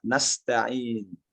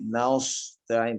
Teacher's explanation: Jangan ragu sehingga membuatnya menjadi tebal seperti nasta'in, tidak. Ya seperti S biasa saja.